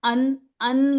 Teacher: नून की पूरी आवाज निकाली, जबान जाके नून के मखरज पे लगी, इसका मतलब नून की आवाज निकली। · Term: इजहार